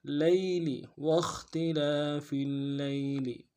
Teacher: لام کو یا کے سامنے لانا ہے، یا لین بغیر کھینچے پڑیں گے